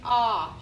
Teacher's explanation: The O is saying ah, short O.